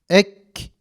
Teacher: Bakın ses akmıyor. Sadece en sonunda bir nefes akışıyla biz bunun kef olduğunu anlıyoruz.